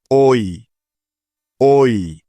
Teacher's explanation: মুখ খুলে উচ্চারণ করতে হয় এ তারপরে আছে ঐ ঐ অর্থাৎ স্বর অ এবং রস ই একসাথে মিলিয়ে পড়লে যেমন সাউন্ড হয় ঠিক তেমন